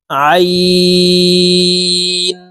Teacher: আইন হরফের উচ্চারণ হলকের মধ্যখান থেকে চাপ দিয়ে পড়তে হবে কারণ আইনের মাখরাজ হালকের মধ্যখান থেকে হবে আইন মিম মিম লাম